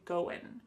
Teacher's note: That final G in the word going is going to be cut off and we'll just say going.